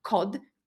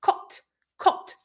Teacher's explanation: pronounced with a t sound which is completely voiceless